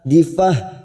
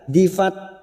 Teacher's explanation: tak marbut yang dibaca wakaf ujungnya kita rem kita membaca seperti Huruf ha